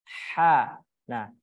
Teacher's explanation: huruf yang berada di tenggorokan bagian tengah huruf Ain dan huruf ha